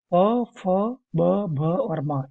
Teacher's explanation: होठ से छूने वाले छूकर निकलने वाले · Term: ओट